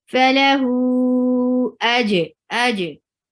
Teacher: Hu for haraka long, because after mad asli you're finding this hamza, so you're making that mad asli, which was 2 haraka long before. Now it is 4 haraka long, because hamza is coming up.